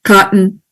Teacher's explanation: cotton, which is a glottal stop